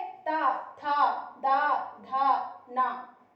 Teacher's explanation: ऐसे वर्ण जिनका उच्चारण करते समय हमारी जिह्वा दांतों को स्पर्श करती है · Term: दंत व्यंजन